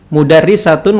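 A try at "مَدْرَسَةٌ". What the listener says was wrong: Lah, antum tadi bacanya mudarrisah. Terjemahannya sekolah.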